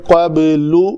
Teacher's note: با کے اوپر بھی کلکلا ہوگا، با بھی حروف کلکلا میں سے ہے